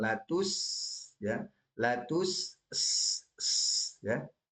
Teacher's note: huruf sinnya punya sifat hams. Sifat hamsnya ini harus ditunjukkan latus ya latus ya harus terdengar jadi jangan buru-buru.